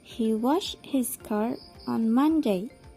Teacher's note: Jadi fokus dalam kalimat tersebut adalah pada kata washed, car, dan Monday. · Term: tone units